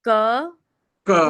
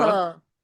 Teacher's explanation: The ka is with less air, so it's called alpa prana. The same thing comes once again with more air, which is the mahaprana. So ka, Ka, again tongue goes to the back of the throat and says kha.